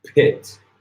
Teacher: a little puff of air is coming out of your mouth so in English when we say when we say pit there's